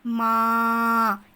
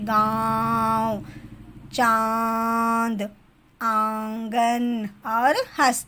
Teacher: उच्चारण मुख और नाक दोनों से होता है, उसे हम अनुनासिक कहते हैं। उदाहरण के लिए माँ, यहाँ पर मुख, यहाँ पर क्या है, मुख का भी उपयोग होता है और क्या है, क्या होता है, नाक का भी यहाँ पर प्रयोग किया जाता है, जैसे कि गाँव, चांद, आंगन और हंस।